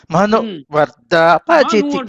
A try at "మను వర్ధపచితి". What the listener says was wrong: మీరు మను అంతే మను అంటున్నారు. మా కూడా ఉదాత్తం వెళ్ళిపోతున్నది. మను వర్ధపచితి మను వర్ధపచితి అది